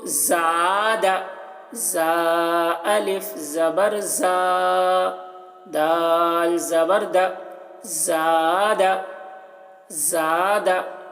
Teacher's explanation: اب دیکھیے یہاں پر الف ہے, الف سے پہلے زبر ہے, تو یہاں پر الف مدہ ہوا تو زا کو کھینچ کر پڑھیں گے, اور دال کو جلدی پڑھیں گے کیونکہ یہاں پر زبر ہے, تو زبر کو جلدی پڑھا جاتا ہے.